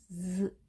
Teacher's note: Z는 지읒이라고 표기가 되어 있지만 사실은 혀가 치아 뒷부분에 닿으면서 떨리는 소리가 나게 됩니다. Z 이렇게 발음하게 됩니다.